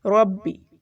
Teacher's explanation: ربی میں دیکھیے روا موٹا پڑھا جائے گا اور با کے اوپر شد ہے تو تھوڑی سختی سے پڑھنا ہے اسے، ربی.